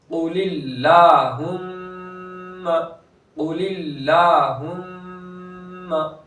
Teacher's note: قاف پور کریں گے، لام باریک ہوگا، دوسرا لام بھی باریک ہوگا. پہلا لام تو لفظ اللہ کا نہیں ہے اس لیے باریک ہوگا، دوسرا لام لفظ اللہ کا ہے لیکن اس سے پہلے زیر ہے تو باریک ہوگا.